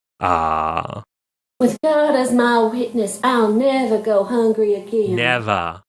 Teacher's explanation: So never in that phrase, you hear the R dropping, but in a Southern way. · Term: Southern R dropping